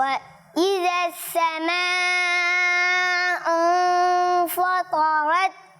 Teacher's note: فا کو موٹا نہیں کرنا، طا کو موٹا کرنا ہے اور مد کو تھوڑا اور کھینچے